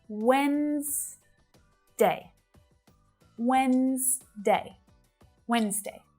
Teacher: We've got 2 syllables there, and that D is a silent letter.